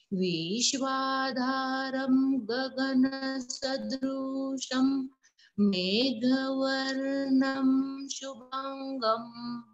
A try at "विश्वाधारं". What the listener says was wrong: Here Bhagini Vishwa V is hrasvam. Vishwadharang. Vishwa. Not Vishwa. Not Vishwa. It is Vishwa. Vishwadharang.